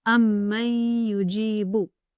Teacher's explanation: When these letters come after Noon Sākin or Tanwīn, they merge partially, and a ghunna or nasal sound is pronounced for 2 counts when doing so.